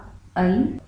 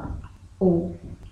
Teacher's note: अर्ध संवृत का मतलब है सेमी क्लोज्ड यानी आधा बंद। तो जिन स्वरों के उच्चारण में मुख द्वार आधा बंद रहता है, ऐसे स्वर अर्ध संवृत कहलाते हैं। इसके दो ही उदाहरण हैं, पहला ऐ और दूसरा ओ।